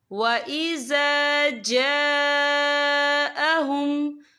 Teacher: یہ مد جو ہے مد متصل ہے، اس کی مقدار 4 حرکت کے برابر ہے، تو ہم اسے 4 حرکت کے برابر کھینچ کے پڑھیں گے۔